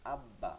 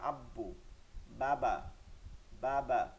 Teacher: দুই ঠোঁটের ভিজা জায়গা থেকে, কোথা থেকে? ভিজা জায়গা থেকে, ভিজা জায়গা থেকে বা উচ্চারিত হয়। আচ্ছা, এটাকে যেহেতু আসছি, দেখেন চিত্রটা, এই যে ভিজা জায়গা ভিতরের দিকটা লেগে আছে, সামনের দিকটা কিন্তু খোলা আছে ঠোঁটের।